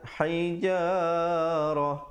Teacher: Hijarah, ha pedas, hijarah, dan ta marbutah bila waqaf bertukar menjadi ha